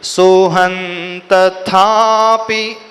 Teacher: वो ह के ऊपर जो बिंदी उसके बाद न का उच्चारण करेंगे क्यों न का क्योंकि आगे जो है त अक्षर आया है